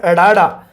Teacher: ਫਟਕਵਾ, ਫਟਕਵਾ ਵਿਅੰਜਨ ਹੈ ਜਿਹੜਾ ਉਹ ਅੜਾੜਾ ਹੈ, ਕਿਉਂਕਿ ਇਸ ਨੂੰ ਅੜਾ ਬੋਲਦੇ ਆ ਜਦੋਂ ਤਾਂ ਜੀਭ ਹੈ ਜਿਹੜੀ ਉਹ ਫਟਕ ਕੇ ਮਤਲਬ ਝਟਕੇ ਨਾਲ ਉਹ ਆਪਣੀ ਕਿਰਿਆ ਕਰਦੀ ਹੈ, ਇਸ ਕਰਕੇ ਇਹਨੂੰ ਫਟਕਵਾ, ਫਟਕਣਾ।